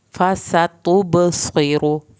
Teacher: सीन को सीटी की आवाज़ के साथ पढ़ें